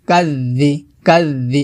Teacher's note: জিহ্বার আগা উপর দাঁতের আগার সঙ্গে লাগিয়ে পাতলা করে উচ্চারণ করতে হবে